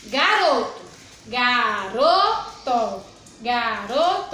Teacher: Garoto, a sílaba mais forte é o ro, né? Então, ro é a sílaba mais forte e essa palavra ela é paroxítona, por quê?